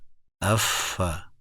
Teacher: اوپر کے سامنے والے دو دانت نچلے ہونٹ کے گیلے حصے پر لگتے ہیں. یہ فا کا مخرج ہے.